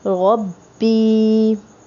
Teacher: रब्बी में जो या है इसे खींचेंगे, थोड़ा सा खींच के पढ़ेंगे।